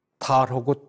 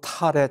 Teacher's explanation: 발음을 어떻게 하느냐, 내가 예를 많이 들지만 달하고 탈의 차이는 달은 보통으로 발음을 하고 탈할 때는 우리가 호기를 세게 합니다. 이러한 차이는 조 위치는 다 똑같아요. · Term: 조음 방식